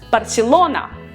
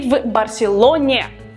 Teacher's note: For example, Barcelona, the stressed syllable lo.